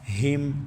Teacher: ہا کو سینے سے ادا کریں گے، حلق کا آخری حصہ جو سینے کے ساتھ ہے